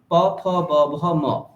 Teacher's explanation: পকার হচ্ছে ওষ্ঠ, সেই জন্য মকারটাও ওষ্ঠ প্লাস নাসিকা, হ্যাঁ, ঠোঁট এবং নাক দিয়ে মকার উচ্চারণ